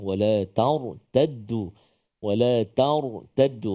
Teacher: ra yang sukun sebelum dia baris atas, maka dia tebal tafkhim.